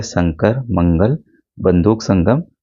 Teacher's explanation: अनुस्वार यह नासिक से किया जाता है। अनुस्वार का उच्चारण करते समय वायु केवल नाक से बाहर निकलती है। · अनुस्वार का उच्चारण करते समय वायु केवल नाक से बाहर निकलती है। इसका चिन्ह सिरोरेखा मतलब बिंदु के रूप में लगाया जाता है, जैसे शंकर, मंगल, बंदूक, संगम।